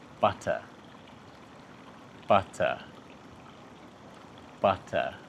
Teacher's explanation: You're probably not saying a proper T. You're making a quick tap with your tongue.